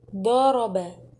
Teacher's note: Huruf bo tekanannya lebih tinggi daripada ro dan ba